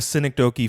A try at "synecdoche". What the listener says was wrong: I think it was synecdoche. I think you got it, but you put the stress on the wrong side.